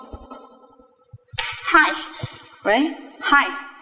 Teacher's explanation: âm này là Âm vô thanh và khi đọc âm này rất Rất là nhẹ và rất là khó nghe một chút